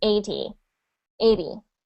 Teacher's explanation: you put the stress on the a instead of the E